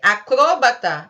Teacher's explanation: Em acrobata, a sua sílaba tônica seria o ba, e aí você vai classificar a palavra como uma paroxítona. Se você disser acrobata, a palavra se torna uma proparoxítona.